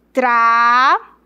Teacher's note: Quando você pronuncia o lho é como se fosse um som só.